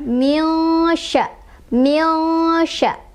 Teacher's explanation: Sebabnya karena ada nun sukun bertemu dengan salah satu huruf ikhfa yaitu syin. Cara bacanya adalah disamarkan sambil berdengung. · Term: ikhfa ausath